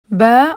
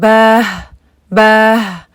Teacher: उसके आखिर में किसी किस्म का झटका या कोई हवा या कोई अ इस तरह की कोई आवाज एक्स्ट्रा ना हो